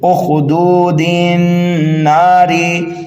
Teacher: direct हम दाल को नून मुशद्दद में मिला देंगे